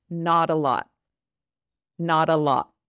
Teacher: the T instead of saying not a lot we just stop the sound